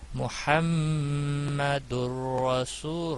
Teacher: را پہ گنہ نہیں ہوگا البتہ ادغام ہوگا، ادغام ہوتا ہے پچھلے حرف کے حرکت کے ساتھ ملانا.